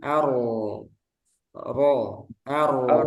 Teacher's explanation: Ini ro-nya langsung tebal.